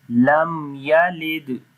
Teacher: If after the mim sakin, if the next letter is ya, so we make izhar shafawi there, like we make the clear sound of mim there, so we say lam yalid.